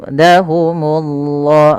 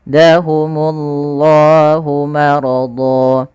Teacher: Pada lafal Allah tebalkan dahumullah, munya tipis.